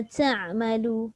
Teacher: masa kita sebut ta'malu tu dah ada dah angin keluar sekali sebenarnya. Tapi tak nampak. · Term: sifat hams